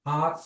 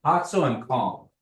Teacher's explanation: That au is nasalized.